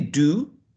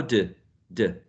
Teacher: do, long u, is going to be changed to schwa